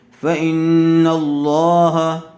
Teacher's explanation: نل، فإنل، لام کھڑا زبر لا، ہا زبر ہا، فإن اللہ، لفظ اللہ کی لام سے پہلے والے حرف پر زبر آیا ہوا ہے، اس لیے لفظ اللہ کی لام کو پر کر کے پڑھیں گے